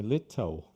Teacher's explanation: os britânicos já usam L mais como português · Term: L aberto